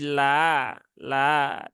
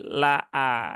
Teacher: ketika ada Hamzah Hamzah fathah kemudian didahului harakat yang sama-sama fathah hamzahnya jangan terayun